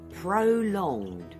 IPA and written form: prəˈlɒŋd (Prolonged)